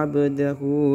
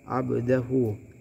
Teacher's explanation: mad silah qasirah, di mana di sini terdapat dhammah terbalik. Cara bacanya satu alif atau 2 harokat.